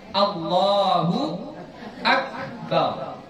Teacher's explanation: Ini ba-nya jangan dipanjangkan ya.